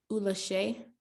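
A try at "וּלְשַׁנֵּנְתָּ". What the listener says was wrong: Pronounce it all. It's another letter there, right?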